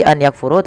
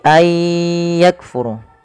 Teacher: Memasukkan bunyi nun kepada huruf setelahnya, kemudian disertai dengan gunnah, maka idgham bi gunnah.